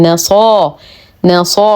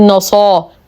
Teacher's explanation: لدينا وس لكن ما قبلها مفتوح فهو حرف لين نرقق النون نفخم الصاد باعلى درجات التفخيم